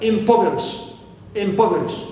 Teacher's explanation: in this word only, as an exception, I should stress po, the anti-penultimate, syllable.